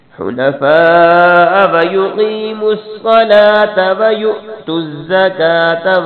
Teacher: فا پہ مد کرنی ہے بڑی مد اس کو تھوڑا سا لمبا کرنا ہے